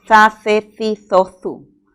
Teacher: Es un sonido fricativo interdental